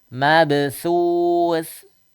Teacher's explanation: mabthus yang lidahnya keluar sedikit. Karena makhrajnya ujung lidah ketemu ujung seri atas